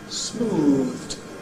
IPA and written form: smuːðd (smoothed)